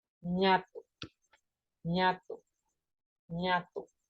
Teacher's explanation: La corriente del aire pasa a través de la nariz como resultado del descenso del paladar o velo en la parte posterior de la boca. · Esta consonante la representaríamos como la que conocemos, la ñ. Su nombre técnico es nasal palatal sonora con aire pulmonar egresivo. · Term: sonido nasal